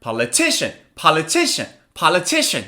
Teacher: this one also has four syllables so Now where's the stress the stress is on the third syllable